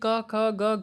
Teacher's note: ये जो क वर्ग है, यानी कि क ख ग घ, ये जो है वो कंठ से ही बोले जाते हैं